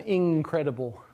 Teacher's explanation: where you get a velar nasal version of in. It's not incredible, at least, unless you're speaking very carefully.